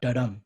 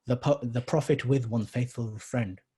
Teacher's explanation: it goes in unstressed and then stressed